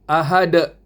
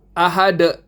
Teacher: Kubra maknanya besar. Qalqala yang besar. Yakni pemantulan yang besar. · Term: qalqalah kubra